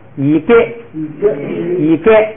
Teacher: 就是低声调送气的，变成平声，变成不送气